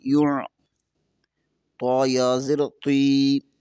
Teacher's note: طا زیر کے بعد یا ساکن ہے، یہاں پر یا مدہ ہوگا اور طا کو بھی پر پڑھیں گے · یا کو عین کے ساتھ ملائیں گے، عین کو پر پڑھیں گے